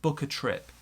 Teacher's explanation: small stress on book big stress on trip and we've got a linking there